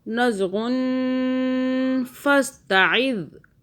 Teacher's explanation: ہم نے غن پہ ہولڈ کیا کیونکہ اس کے اندر نون ساکن چھپا ہوا ہے